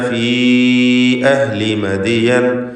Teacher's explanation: ഫീ എന്നതിലെ ദീർഘമദ് മുൻഫസിൽ ജായിസാണ്. 4-5 ഹറക്കത്തിൻ്റെ അളവിൽ യാഇനെ ദീർഘിപ്പിക്കുക. അഹ്ലി അഹ്ലി ഹ clear ആക്കണം.